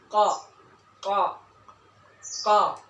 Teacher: keluar dari pangkal lidah dekat tenggorokan dengan mengangkat ke atas ke langit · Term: huruf qaf